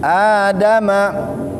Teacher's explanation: Adama, a juga sama, biasa aja. Adama, dal juga jangan kita tebalkan karena dal itu tipis. Adama, jangan adama, jangan adama.